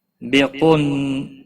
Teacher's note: قاف حروف مستعلیہ میں سے پور پڑھا جائے گا، نون مشدد پر گنہ ہوگا